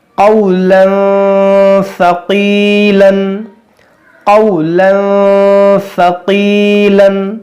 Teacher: देखिए, यहाँ दो ज़बर का तनवीन है, और तनवीन के बाद हुरूफ़-ए-इख़्फ़ा से 'सा' है, इसलिए हम यहाँ ग़ुन्ना करेंगे।